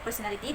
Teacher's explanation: The first part pur or per has smaller stress meaning it still stand out a little but not as much.